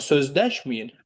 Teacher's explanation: Vurğu düşəcək hansı hecaya? İkinci hecaya.